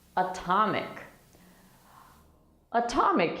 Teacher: atomic is a word where the t is in the stressed syllable okay that's why we pronounce the t normally